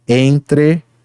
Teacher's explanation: Ocorre com M ou N após uma vogal antes de outra sílaba, em que o M ou N apenas nasaliza a vogal, funcionando exatamente como um tio. · o EN representa um único som, o som da vogal nasal EN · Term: dígrafo nasal